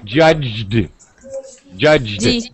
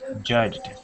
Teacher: you don't have to feel foolish but hold your throat and oh my throat's vibrating judged so that's a voice sound